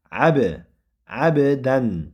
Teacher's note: Abdan id solla ho'p ayn fatha bilan bo'ldi va undan keyingi harf ba harfi sukunlik. Ba harfi sukun bo'lgan qalaqala qilinadi